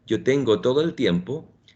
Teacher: when I speak Spanish and I say, for example, yo tengo todo el tiempo, my tongue is actually behind the upper teeth